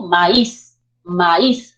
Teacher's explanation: maíz maíz sube la entonación · sube la entonación y radica fuerza de voz en la última sílaba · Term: palabra aguda